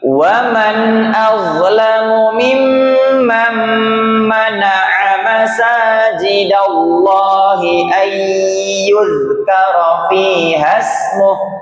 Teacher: Kalau wakaf di sini, maka hu-nya nggak boleh dibaca dan dimatikan, walaupun ada tanda panjang waw kebalik itu nggak berfungsi karena hanya kita sukunkan.